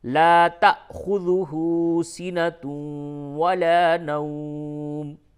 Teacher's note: یہاں پہ تا کے بعد حمزہ ہے، یعنی الف کے اوپر جب بھی جزم ہو تو وہ حمزہ ہوتا ہے، تو یہاں پہ حمزہ پہ جھٹکا ہوگا